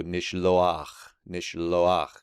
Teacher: it's a vocalic glide into that guttural in order to get that ah sound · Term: furative patak